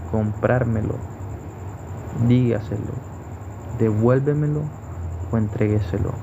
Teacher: estas tienen el acento o la sílaba tónica en la anterior a la antepenúltima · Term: palabras sobresdrújulas